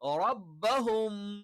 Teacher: സുക്കൂനുള്ള മീമാണ് അതിനുശേഷം ബാ വന്നാൽ നമ്മൾ എന്ത് ചെയ്യും ആ മീമിനെ മറച്ചു മണിക്കും